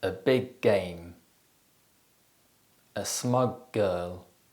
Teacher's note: when a word ends in a consonant sound and the next word starts with the same consonant they overlap and it sounds like just one slightly longer consonant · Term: gemination